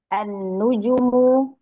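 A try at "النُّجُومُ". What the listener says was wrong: An-nuju yang panjang ju gitu.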